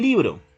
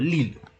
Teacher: en libro, este sonido que es lateral se asimiló en la segunda sílaba diciendo lilo